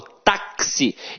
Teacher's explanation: o X aqui tem som de KS. Ou seja, uma letra tem 2 sons. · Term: dífono